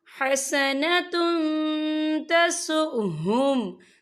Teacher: इन तमसस्कुम हसनतुन तसुहुम, यहाँ देखिए हसनतुन, ता के पर तनवीन है, तनवीन के बाद जो है ता आ रहा है और ता जो है इक्फा का वर्ड है, तो हम यहाँ इक्फा करेंगे, तनवीन की आवाज़ को नाक में छुपाएंगे